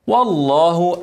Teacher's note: ارقق الواو وفخم لام اسم الجلاله عشان قبله فتحه